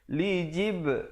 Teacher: jib ada qalqalah di situ, qalqalah sughra